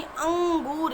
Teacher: अनुस्वार का उच्चारण स्थान भी नासिका होता है